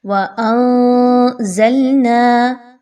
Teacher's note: ناک میں اور منہ میں نون کی آواز چھپ رہی ہے، واضح نہیں ہو رہی۔ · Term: اخفا